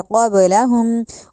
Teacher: قب کا جو قاف ہے ایک تو ہم نے اس کو موٹا کرنا ہے، دوسرا جو آگے با آ گیا قاف کے بعد اس پہ ہم نے قلقلہ کرنا ہے، قبلن نہیں کہنا، قبلہم، قاف دو نقطے والی ہے اس کو موٹا کر کے پڑھا جائے گا اور با پہ قلقلہ کیا جائے گا